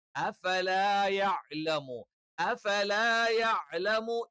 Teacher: മുൻപല്ലിന്റെ അറ്റം താഴെ ചുണ്ടിന്റെ പള്ള ഭാഗത്ത് വെച്ചുകൊണ്ടാണ് ഫ.